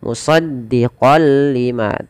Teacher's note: kita masukkan kepada huruf lam musaddiqol lima awalnya dibaca musaddiqon lima karena bertemu lam masuk tanwinnya kepada lam nunnya hilang · Dengan memasukkan tanwinnya kepada huruf lam. Idgham itu pada dasarnya adalah memasukkan tanwin atau suara nun sukun kepada huruf setelahnya, dan di sini kita masukkan kepada huruf lam. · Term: idgham bila gunnah